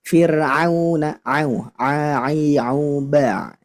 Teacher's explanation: jadi huruf Ain itu dia dari wastul halqi, Bu. Nah, jadi dari tengah tenggorokan, bukan dari hidung.